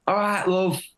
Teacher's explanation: in the south of England we'd say both sounds ah and uh but in the north it's just uh